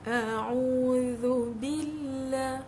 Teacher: So normally orang buat zu tu lidah kat dalam, walhal sepatutnya lidah kat luar. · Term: Zal